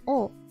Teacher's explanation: oh doesn't exist in Japanese because Japanese doesn't have that diphthal the Japanese o is pretty straight actually but it's very close to the diphthong o